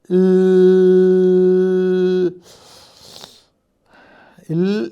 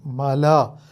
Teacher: വായു നാവിൻ്റെ 2 വശങ്ങളിലും കൂടി ഒഴുകുന്നു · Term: പാർശ്വികം